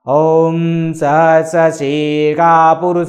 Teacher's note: सा का उच्चारण जब होगा तो वो खा होगा सा नहीं होगा